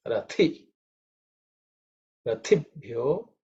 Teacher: this Rathi is the second letter in the Tha Varga. So it has to be aspirated.